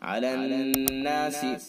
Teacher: نون حرف مشدد ہے لہذا حرف غنہ ہوگا، ایک الف کے برابر ناک میں آواز لے جا کر کے پڑھیں گے